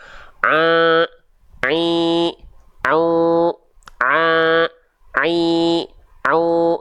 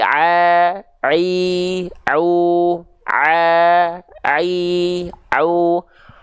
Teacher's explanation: nanti ada bunyi sengaunya suara ainnya jadi sengau